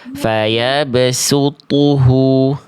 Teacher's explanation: Sunya tipis, to nya tebal.